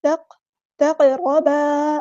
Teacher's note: ولا تقربا، قاف پورا ادا کریں گے، تا باریک لائٹ لیٹر ہے، قاف پورا ادا ہوگا، ہیوی لیٹر ہے، را پور یہاں پہ ادا کرنا ہے، ہیوی لیٹر ہے، الف مد آ گیا تو الف کے برابر لمبا کریں گے اور قاف پہ قلقلہ ہوگا۔